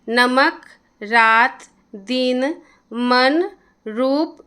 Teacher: हिंदी के प्रत्येक शब्द के अंतिम अ लगे वर्ण का उच्चारण हलंत सा होता है